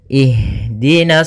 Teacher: ke huruf Shad hati-hati jangan menebalkan huruf nnya jangan ihdi tapi nnya tipis shadnya baru yang ditebalkan